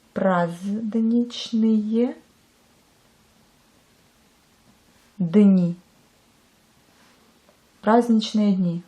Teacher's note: À nouveau, on ne prononce pas le D, mais on l'écrit.